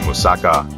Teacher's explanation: moussaka, the stress is on the last syllable